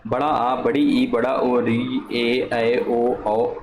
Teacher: इन स्वरों के उच्चारण में ह्रस्व स्वरों की अपेक्षा 2 गुना अधिक समय लगता है। जैसे बड़ा आ बोल दिया हमने, ठीक है, बड़ा आ थोड़ा सा अधिक समय लगा, बड़ी ई थोड़ा अधिक समय लगा, री, बड़ा ऊ, ए ओ औ, इनमें ज़्यादा टाइम लग रहा है। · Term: दीर्घ स्वर